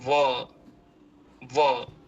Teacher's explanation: अतः यह दंतोष्ठ ध्वनि वाला वर्ण कहलाता है। इसके उच्चारण में जीहवा दांतों से लगती हुई ओठ को भी स्पर्श करती है। ओठ भी कुछ मुड़ते हैं इसमें है। · वकार का उच्चारण स्थान जो होता है वह दंतोष्ठ होता है। दंत भी होता है, दांत भी और ओष्ठ भी।